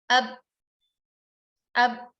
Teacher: Kemudian pada ba sukun tanpa qalqalah, ab, makhraj dan rahangnya juga dua-duanya tertutup ya, tetap rapat